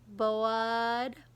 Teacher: you hear the uh instead of the er it's because our tongue is flat at the bottom of our mouth and we need our tongue to curl up a little bit